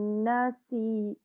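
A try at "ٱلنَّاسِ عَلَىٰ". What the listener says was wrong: Jangan nasi. Na tu panjang, ada alif. Nasi'ala.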